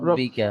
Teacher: ল নয়, র এর উপরে ভাই। র এর উপরে জাবার অথবা পেশ আসলে কি করে পড়তে হয়? রকে পুর করে পড়তে হয়